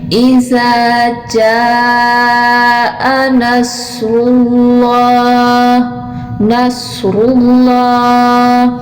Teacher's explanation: صاد کو بھی موٹا پڑا جائے گا، را کو بھی موٹا پڑا جائے گا اور لام کو بھی موٹا ادا کیا جائے گا